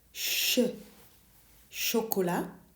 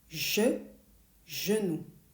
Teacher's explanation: Now for the one on the right, je, you keep your mouth in the same position, but you turn on your voice. You add a buzz, je. You hear it in genou.